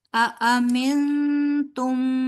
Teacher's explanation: سو ان کو تیزی سے پڑھیں گے، امنتم، امنتم، ٹھیک ہے۔ نون ساکن کے بعد حروف ہلکی میں سے کوئی بھی حرف نہیں ہے، حروف ہلکی کے علاوہ جو ہے وہ تا ہے، تو یہاں پہ غنہ کریں گے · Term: اخفا